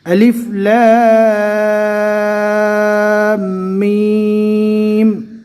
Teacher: الف کے اوپر کوئی حرکت نہیں ہے، لیکن الف کو پڑھا جائے گا لیکن کھینچا نہیں جائے گا۔ لام اور میم کو کم سے کم 3 اور زیادہ سے زیادہ 4 الف کے برابر کھینچ کر پڑھنا ہے